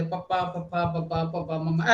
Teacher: ਇਹ ਹੋਠੀ ਵਿਅੰਜਨ ਨੇ ਸਾਰੇ, ਹੋਠ ਜੁੜਦੇ ਹੈ, ਲਿਪਸ ਜੁੜਦੇ ਹੈ